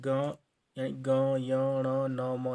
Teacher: हमारे पास आता है अनुनासिक व्यंजन अनुनासिक व्यंजन मतलब जिनका जो उच्चारण जो होता है वो नाक से होता है नासिक मार्ग से होता है